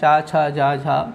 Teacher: चा, छा, जा, झा, तो ये तालु से स्पर्श करता है